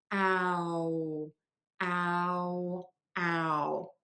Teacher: Contrast this with cloud, OUD, like the clouds in the sky, or in the cloud, which is where you store your data, that is with the ow sound. So you do start with that wide open mouth, but then you move to a pucker.